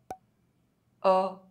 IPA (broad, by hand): ɔ